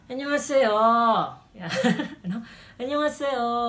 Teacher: yung huling syllable, palalakihin natin